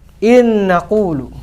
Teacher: nun yang pertama ini hilang, ya, hilang masuk ke dalam huruf nun yang kedua